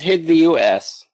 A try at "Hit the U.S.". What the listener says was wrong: Yeah, a little bit of a W there.